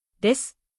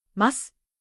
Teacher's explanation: But native speakers usually say something closer to “des”. The う is still there, but it is not fully voiced. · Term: vowel devoicing